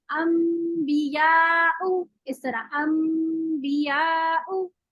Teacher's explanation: तो दोनों को नाक से आवाज निकल जाती है और आवाज जो है वो मीम की निकलती है, क्योंकि हम मीम जो है वो होठों को मिला के मीम पढ़ ली